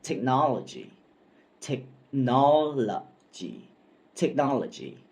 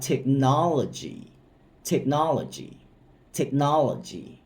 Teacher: คำนี้เป็นคำ4พยางค์แล้วเน้นเสียงพยางค์ที่2ครับ